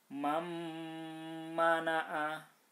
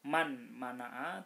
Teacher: Idgham itu tadi dimasukkan, artinya huruf pertama itu tidak dibaca tapi masuk kedua, kemudian didengungkan. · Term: idgham bi gunnah